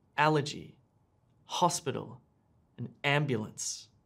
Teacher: these words have three syllables and the stress is on the first syllable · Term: word stress